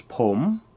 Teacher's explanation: the man says P which is a rising tone